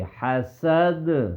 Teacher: دال جو ہے نا حرف قلقلہ میں سے ہے، ٹھیک ہے، اس لیے یہاں پہ ہم کیا کریں گے، آواز دال کی لوٹ کر آئے گی